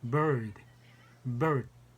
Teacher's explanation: 이게 소리에 R 발음이 살짝 섞이게 하는 게 bird 이렇게 이런 단어를 말할 때 쓰는 소리입니다